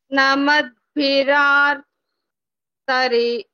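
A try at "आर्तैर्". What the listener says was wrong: Artair. Arti. Have you heard the name of a person? Arti. Artair. That's it. Artair. It is not artrair. Artair.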